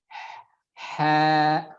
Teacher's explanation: Hentakan yang pertama saja dia dikeluarkan dari tengah tenggorokan.